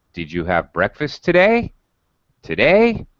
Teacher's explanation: we ask a closed-ended question or yes or no question uh our voice should rise on the final syllable or possibly syllables of the sentence for example did you have breakfast today today rises that's a